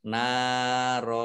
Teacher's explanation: kalau berhenti maka ro fathah tanwin alif ini dibaca fathah panjang dua harokat